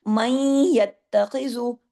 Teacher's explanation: नून साकिन के बाद या है ना, मई, मीम जो है आवाज थोड़ी सी नाक में नून की आ रही है लेकिन जुड़ किससे रहा है जाके, या के साथ तशदीद है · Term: इदगाम नाकिस